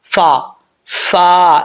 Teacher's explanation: اوپر والے دانتوں کا جو نچلا حصہ ہے نیچے والے ہونٹ کے تری کے اوپر تری کے حصے پہ لگے گا